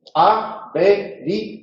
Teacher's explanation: El acento va sobre la última sílaba, por lo tanto es oxítona o aguda y acaba en S, se acentúa.